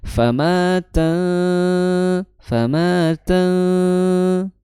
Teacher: tidak memiliki sifat istial atau naiknya pangkal lidah. Maka di situ bunyi ikhfanya tarqiq ya atau tipis.